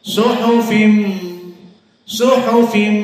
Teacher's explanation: makhrajnya min khoisum, dari hidung. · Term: idgham bi gunnah